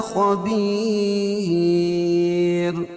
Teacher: بما تعملو و مدہ خبیر خا کو پر پڑھیں گے اور وقف کی صورت میں یہ را باریک پڑھی جائے گی